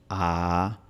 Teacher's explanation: Cuando pronunciamos una A, la lengua está abajo, A, y no está en el frente.